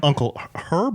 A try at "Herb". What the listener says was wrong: I thought the H was silent.